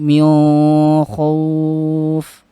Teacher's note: Jadi ikhfa dibacanya ya, karena kha pada qiraatnya Abu Ja'far ini masuk kepada lisan ya, dikategorikan kepada makhrajnya di lisan sehingga masuk kepada hukum ikhfa